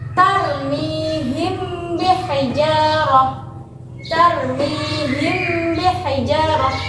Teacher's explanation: pengucapan mim disamarkan atau bibir tanpa ditekan kuat yang disertai dengan gunah atau berdegung · ada mim mati bertemu dengan huruf ba yang berharakat kasrah jadi bacanya harus dengan gunah ataupun disertai dengung alias disamarkan ke huruf ba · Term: Ikfa Syafawi, ikhfa syafawi, ifa syafawi